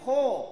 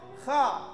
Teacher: Bunyi O-nya tidak dibentuk oleh mulut.